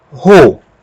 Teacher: No lugar de pronunciar apenas O, como a aspiração é forte, nós vamos pronunciar ro. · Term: aspiração forte